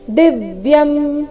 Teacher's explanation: ದಿವ್ಯಂ ದಿ ಮೇಲೆ ಆಘಾತ